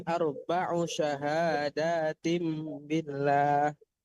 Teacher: Hati-hati arba'u u-nya dipendekkan